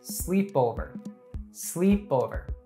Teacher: In the word sleepover, the primary stress falls on the first syllable, sleep. · in my hometown made me feel hopelessly lonely the word sleepover the primer stress falls on the first syllable sleep so the word is pronounced as sleepover sleepover the other syllables